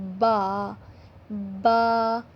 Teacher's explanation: با جو ہے دونوں ہونٹوں کے تر حصے سے ادا ہوتا ہے